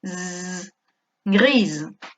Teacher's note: tenemos una S entre dos vocales, por lo tanto pronunciaremos una S sonora, zzz, grise.